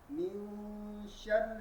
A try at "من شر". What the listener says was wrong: Instead of making it too, because you start pronouncing it from your nose then. When you go too high, you say min sh, right? It comes out from the nose, not supposed to. Min sharri.